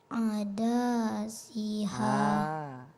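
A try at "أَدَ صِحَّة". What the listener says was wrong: Danya pendek. Langsung nak. Ada siha.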